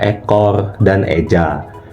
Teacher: Untuk vokal E madia atas depan itu posisi lidahnya menengah ke atas dan maju ke depan. Untuk posisi bibir sedikit direntangkan dan tidak dibulatkan. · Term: vokal E madya atas depan